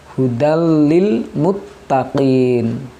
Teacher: tanwin bertemu dengan huruf lam zaman Anglo adalah huruf idgam bilagunnah jadi membacanya harus jelas hudallilmuttaqin tanpa menahan huruf lam nya